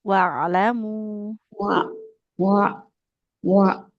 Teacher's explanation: Nah, ainnya harus mengalir suaranya.